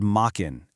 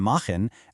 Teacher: You can literally feel the shift in your mouth right from that hard K in the back of your throat to that breathy fricative. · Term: high German consonant shift